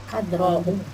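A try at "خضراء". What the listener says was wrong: Kho. Khadra'u.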